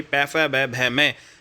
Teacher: जैसे आप पै फै बै भै में बोलते हैं, हमारी जो ओष्ठ है दोस्तों वो आपस में टच करते हैं, ठीक है, ओठों से जो है ये बोले जाते हैं भाई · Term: ओष्ठ व्यंजन